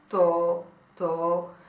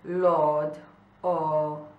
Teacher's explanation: una o aperta, piuttosto lunga, come nel termine italiano toro